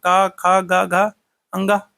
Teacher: वर्ग का जो है तो इसका उच्चारण स्थान क्या होता है क वर्ग का उच्चारण स्थान कंठ होता है